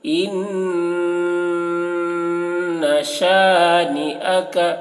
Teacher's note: نون مشدد ہے، نون کو غنہ کریں گے